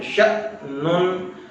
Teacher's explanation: ش کو ہم زور سے ہلائیں گے، جھٹکا دے کے پڑھیں گے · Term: حمزہ